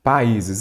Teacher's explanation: São duas vogais em sílabas diferentes quando você separa essa palavra. Observe, duas vogais, mas ficaram em sílabas diferentes. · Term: hiato